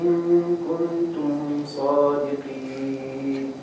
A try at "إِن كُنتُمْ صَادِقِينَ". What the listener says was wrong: What's the rule in kuntum? طيب. The word, when you said in, you made it a little bit long, but when you say kun, you didn't make it long at all.